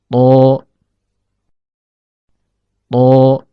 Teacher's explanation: Perhatikan gambar animasi berikut. Huruf to keluar dari ujung lidah yang bertemu dengan pangkal gigi seri atas.